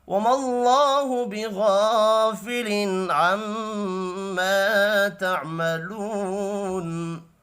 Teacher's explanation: اللہ کا نام زبر کی وجہ سے پر پڑھا جائے گا